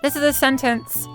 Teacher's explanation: So femme voices either stay level or kind of flick up at the end.